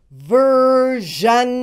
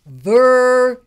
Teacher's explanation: sh sound and make a voice in your throat at the same time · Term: ZH sound